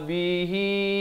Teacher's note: hi itu dipanjangkan 4 atau 5 harakat ya, maksilah tawilah di situ.